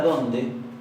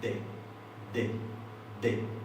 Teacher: En la palabra donde, nosotros decimos dos D distintas. La primera es interdental fricativa. La puedo arrastrar indefinidamente. La segunda es oclusiva dentoalveolar. Pongo la lengua un poquito más atrás, entre la encía y el diente, y no la puedo alargar, porque al ser oclusiva es un sonido como el de un corcho que se destapa y se hace una sola vez.